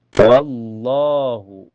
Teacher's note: lafaz jalalah ini dibaca tebal atau tafhim ya. Karena sebelumnya berharokat fathah atau di atas.